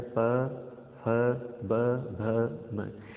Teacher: इन वर्णों को आप बिना होठ का उपयोग किए बोल ही नहीं सकते, यानी अपना होठों को हिलाए बिना आप नहीं बोल सकते। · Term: पै वर्ग